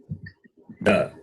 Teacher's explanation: Da is the alpa prana, non-aspirate.